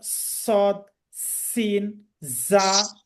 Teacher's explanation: শীষ দেয়া, শীষ দিয়ে পড়া। এই হরফগুলো উচ্চারণ করার সময় একটা সাউন্ড বের হবে শীষ দেওয়ার মতো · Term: সফির